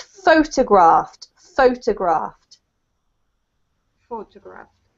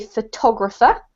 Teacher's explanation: because it's the verb you have to put the emphasis on the first part